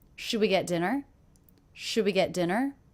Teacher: my voice does go up and pitch at the end dinner dinner that's because this is a yes/no question pitch goes